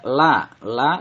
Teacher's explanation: la dinamakan mad tabi'i, dibaca panjang 2 harokat karena fathah diikuti alif